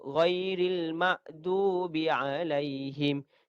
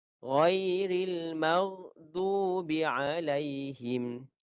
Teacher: Huruf ghain di leher. Huruf ghain di leher.